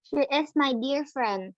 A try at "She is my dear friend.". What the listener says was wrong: Dear-nya pendek. EA bunyi I-nya tapi pendek, nggak panjang.